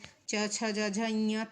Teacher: च, छ, ज, झ, ञ तालु से